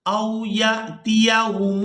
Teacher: یا کو حمزہ ساکن کے ساتھ ملانا ہے تو جھٹکے کے ساتھ ادا کرنا ہے